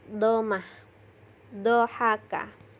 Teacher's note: Yang kedelapan, salah satu tepi lidah dengan geraham atas adalah tempat keluarnya huruf dot. Jadi cara mengucapkannya dengan menempelkan salah satu tepi lidah, boleh yang sebelah kiri atau sebelah kanan, dengan geraham yang atas. Menggunakan tepi lidah sebelah kiri itu cenderung lebih mudah daripada yang sebelah kanan.